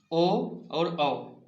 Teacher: इस दोनों का उच्चारण कंठ और ओठ दोनों के माध्यम से होता है, इसलिए इसे कंठोष्ठ कहते हैं।